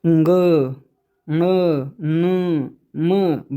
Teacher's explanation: नासिका से होता है, क्योंकि ये मुख और नाक दोनों से बोले जाते हैं, मुख और नाक दोनों से बोले जाते हैं। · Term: पंचमाक्षर